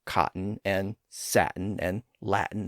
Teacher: sometimes the t sound in the middle is dropped altogether in words like cotton and satin and Latin and so on. That usually happens when the word ends in an N sound. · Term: dropped T, glottal stop